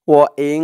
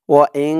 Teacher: তো এই নুন সাকিন বা তানবিনের পরে যদি ইকফার সেই 15 হরফ, যেই 15 হরফ আমি বললাম, সেই 15 হরফের যে কোনো একটি হরফ আসে, তাহলে সেখানে ইকফা অর্থাৎ নাকের ভিতরে লুকিয়ে গুন্নার সহিত পড়তে হবে। ও ইং, নাকের ভিতরে যাবে গুন্নাহাটা, ও ইং।